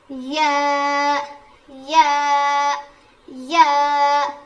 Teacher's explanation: या जुबान के बीच के हिस्से से अदा होता है।